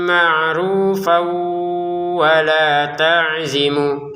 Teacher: Berarti kalau kita berhenti dibaca panjang dua harakat. Kalau disambung maka panjangnya hilang berganti hukum tanwin bertemu wau. Masukin dengan dengungan.